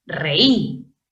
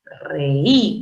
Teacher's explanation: Yo entiendo que la fuerza de voz recae en la vocal débil, la I, y por lo tanto debo separar en sílabas distintas la E de la I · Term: hiato acentual